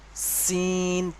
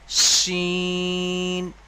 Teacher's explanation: এইটা উচ্চারণ করার সময় যেমন সিটি, সিটি মতো একটা আওয়াজ হয়, এই যে একটা আওয়াজ হচ্ছে, এইরকম ধরনের একটা আওয়াজ হবে। সিন পাতলা ভাবে, সিন। আর এটা মোটাভাবে উচ্চারণ হবে শিন। যেমন গরুর শিং হয়, তো ঠিক ওই রকমভাবে শিং যেমন উচ্চারণ বলে যে গরুর শিং, ঠিক ওই রকমভাবেই উচ্চারণটা হবে শিন, তিন আলিফ পরিমাণ টান হবে।